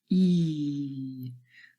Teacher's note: it is produced at the front of our mouth. And also the tongue is quite high and our mouth is relatively closed. E. So say the sound and become aware of where your lips are, how your lips are formed, and where your tongue is. · E is a front vowel sound, a front and closed vowel sound. That is because it is produced at the front of our mouth.